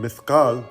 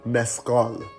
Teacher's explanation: in Persian, there is no th sound, and so we pronounce this as an S.